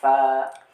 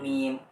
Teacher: Ada juga dari kedua bibir ya, asyafatain ya